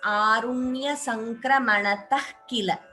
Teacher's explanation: here Visarga followed by Ka, Jihva Muliya. So we chant the Visarga as Arunya Sankramanatah Kila.